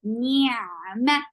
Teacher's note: Attach with ain. Ain will get sifa of tawassut. And ain should be from your throat. Ni'ma, ma is short.